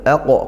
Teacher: qof sukun lagi dipantulkan dengan tebal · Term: qalqalah kubrah